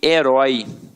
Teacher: herói ela tem o ditongo aberto